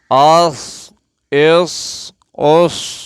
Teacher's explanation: इस सौद को भी पूरी आवाज़ में पढ़ेंगे मोटी आवाज़ में